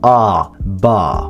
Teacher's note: Pour le B, aucune différence, mais pour la voyelle, on va ouvrir grand et rétracter complètement la langue